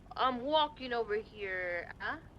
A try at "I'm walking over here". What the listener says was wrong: There was way too much emphasis in the here. He'd probably say, "I'm walking over here."